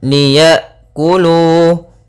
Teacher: Pada bacaan liyakulu, Di sini ada huruf hamzah sukun. Hamzah sukun memiliki sifat yang mencolok, yaitu sifat jaharnya dan sifat syiddah, yaitu tertahannya nafas dan tertahannya suara ketika melafalkan hamzah yang sukun.